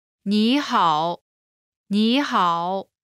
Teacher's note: when there are two third tones in a row, the first one changes to the second tone